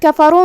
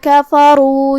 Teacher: کلمت کفروا میں را پہ پیش ہے تو ہمیں را کو تفخیم سے ادا کرنا ہے، مطلب اسے بھاری آواز میں پڑھیں گے